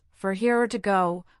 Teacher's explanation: It often comes out as, for here or to go, with or reduced to a quicker sound. For here might sound like fair here.